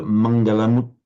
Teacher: I detected a very slight pause, as if you were almost putting mangalam uttamam, but it would be recited flowing mangalamuttamam, almost as if this word ended in a mu.